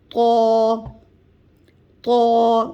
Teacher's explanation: طا کا مخرج سیم تا اور دال کا ہے، یعنی زبان کی نوک اوپر والے دانتوں کے جڑ سے اندر کی طرف جڑ میں لگے گی تو طا کی ادائیگی ہوگی